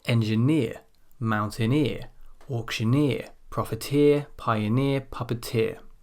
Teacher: always stressed as the final syllable in a word